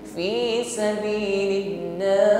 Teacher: Seharusnya sabilillah panjangnya cuma satu alif, karena kita wakaf di situ menjadi mad arid lis-sukun. Sabilillah boleh dipanjangkan 1, 2 sampai 3 ayun. Fi sabilillah kalau berhenti, ya.